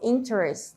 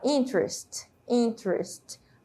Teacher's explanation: É como se essa letra E não existisse e juntasse aí a letra T com a letra R